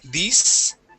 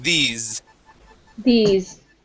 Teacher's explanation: make sure that your s though is a voiced s sound